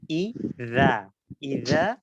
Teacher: প্রথমটা হলো জাল, পরের সবগুলো ধ্বনিগুলো হবে যা। তাহলে দালের মাখরাজটা আমরা করব জিহ্বার আগা, উপরের দুই দাঁতের আগার সাথে লাগিয়ে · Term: দালের পরে যে জালটা